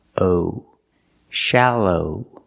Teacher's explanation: the second syllable is the long o like know and go